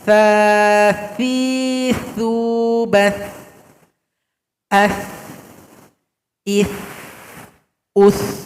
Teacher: Huruf tha, tempat keluarnya atau makhrajnya ujung lidah kita dempetkan dengan ujung gigi seri atas dan ujung gigi seri bawah. Seperti tergigit tha.